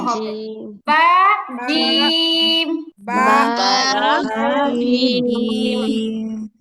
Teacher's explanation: জিবার মাঝখান উপরে তালুতে লাগবে।